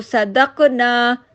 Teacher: ہم نے کیا کیا کہ قاف کے زبر کو ہم نے ختم کر دیا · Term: متحرک کو ساکن کر دینا